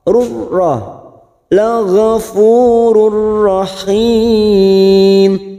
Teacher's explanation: La ghafurur ada duma tanwin di sini yang bertemu ro, namanya bacaan idgham bila guna, hanya masuk tanpa mendengung, tanpa ditahan lama-lama, masuk pada huruf ro